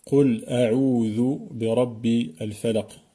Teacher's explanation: bien prononcer le dhal dans a'udhu en mettant le bout de la langue sur le bout des incisives supérieures, les dents d'en haut qui sont au milieu, donc les incisives, pour bien faire un dhal et non pas un del qui ressemble au D en français.